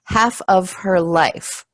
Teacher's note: even though we write F it's actually a vu sound